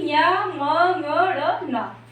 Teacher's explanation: हर वर्ग का जो पंचम अक्षर है इनका जो उच्चारण स्थान होता है नासिका होता है